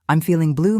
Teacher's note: Stress blue at the end for emotional emphasis.